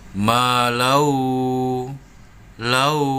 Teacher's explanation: Tanwin bertemu dengan huruf waw. Cara membacanya langsung masuk dan mendengung. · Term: idgham biguna